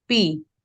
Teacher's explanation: there is no rise but it is said at a mid pitch